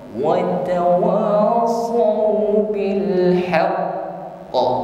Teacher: ketika kita berhenti di sini maka qaf keluar sifat qalqalah